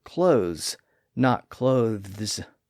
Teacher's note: like that that's why many people today wear clothes not clothes they don't pronounce the th sound in the word in fact that th sound largely disappeared from the word clothes